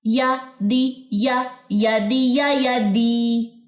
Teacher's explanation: یہاں پہ یا کی زیر دال کی زیر یا سے مل کے لمبی ہو جائے گی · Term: یا مدہ